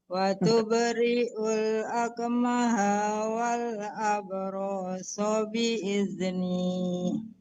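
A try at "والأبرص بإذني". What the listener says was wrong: Ya, agak tertahan-tahan Ibu di huruf yang nggak panjang. Wal abra. Jangan dipanjangkan rohnya.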